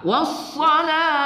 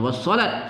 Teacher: ta marbutah kita waqafkan dengan suara ha